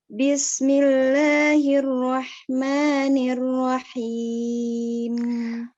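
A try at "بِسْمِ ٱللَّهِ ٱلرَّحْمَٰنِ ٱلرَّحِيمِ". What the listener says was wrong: Ro-nya bisa ditebelin nggak? Bismillahirrahmanirrahim. Ro-nya tebel.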